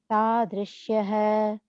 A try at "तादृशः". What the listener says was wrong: I think you're saying Tadrishyah. There's no ya there, right? So Tadrishaha.